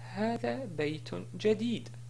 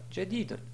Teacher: Si on s'arrête sur la phrase, on dit Hada, Bayton, Jadid, et non pas Jadidun.